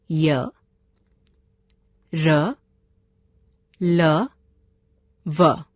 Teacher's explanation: अंतस्थ व्यंजन जिन वर्णों का उच्चारण स्वरों और व्यंजनों के मध्य का होता है वे अंतस्थ व्यंजन कहलाते हैं। इनका उच्चारण करते समय जीभ मुंह के किसी भाग को भी पूरी तरह स्पर्श नहीं करती।